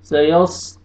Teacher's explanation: सौद को मोटा करके पढ़ना है